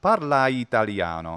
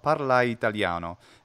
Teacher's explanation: And I'm, of course, not a native speaker, but I'm attempting to approximate what a native speaker will do, which is the natural merger of ending vowel with initial vowel of the following word into parla one italiano.